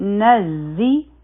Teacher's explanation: نون به د ز سره یوځای شي، نزي، په دې کې بزنګ والا آواز راځي